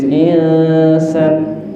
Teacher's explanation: pas kita mendengung, kita udah siap-siap ke huruf sin, dan sin niku hurufnya tipis. Jadi mboten angsal insan, mboten. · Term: ikhfa hakiki